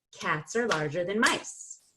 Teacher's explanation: we're going to change the word are, and we're going to reduce the vowel so that instead of ah, which is a lot of effort, we're just going to say And instead of than, which is a lot of effort to make that A, we're just going to say than.